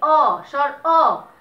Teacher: বিবৃত মানে খোলা, সংবৃত মানে গোলাকার বা গোল, যেটাই বলো না। এখন যখন স্বর অ এর মতো উচ্চারিত হচ্ছে তখন সেটা বিবৃত, মানে মুখটা খোলা থাকে